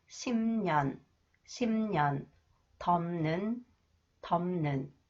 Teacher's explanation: The third nasalization, when the final consonants 피읍 combined with 니은 or 미음, it is pronounced m sound.